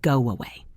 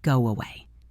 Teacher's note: If you say it slowly, it is go away. But in natural speech, we add a little w sound in the middle. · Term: intrusive sound